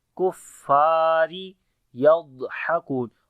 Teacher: Ha we read from the middle of the throat